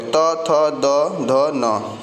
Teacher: त वर्ग जो होता है वो दंत से बोला जाता है।